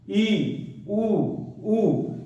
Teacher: सबसे कम मुख खुलता है हमारा समृद्ध स्वरों को बोलते समय